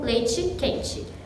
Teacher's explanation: a pronúncia do I acarreta a palatalização do T, que passa a soar como leite quente.